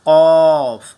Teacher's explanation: Next ہے کاف، کاف، قاف، پہلے تھا قاف، اب ہے کاف، قاف۔ قاف کی جو 2 ڈاٹ والا قاف ہے، اس کی آواز کو ہم منہ کھول کر، گویا کہ بھرے ہوئے منہ کے ساتھ اور موٹی آواز کے ساتھ اس کو ادا کریں گے